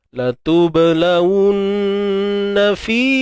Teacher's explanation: Untuk huruf ba kita kena lantunkan dia. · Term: qalqalah